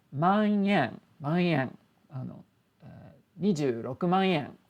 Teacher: If there's an n sound before en, a small little sound change happens where it becomes man yen, 26万円. So it's almost like an ng sound followed by a y sound. It's a little bit different, but it makes it sound more like yen.